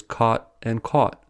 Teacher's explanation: Areas in the US where there is no-merger, ‘cot’ and ‘caught’ are pronounced as /kɑt/ and /kɔt/.